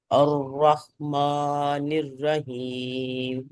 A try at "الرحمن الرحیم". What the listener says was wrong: ماں کو اتنا لمبا نہیں کریں. الرحمن الرحیم.